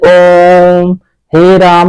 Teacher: प्लतु स्वर होता है जिन स्वरों के उच्चारण में दीर्घ से भी अधिक समय, अर्थात जो इन दोनों ह्रस्व और दीर्घ को मिलाकर इनसे भी ज्यादा समय लगता है, उसको हम कहते हैं प्लतु स्वर।